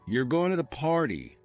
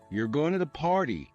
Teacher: For example, if you say, you're going to the party with a flat tone, it's just a statement. But if you raise your voice at the end, you're going to the party, it becomes a question.